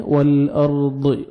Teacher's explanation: را ساکن سے پہلے زبر ہے، آپ نے را کو پر کرنا ہے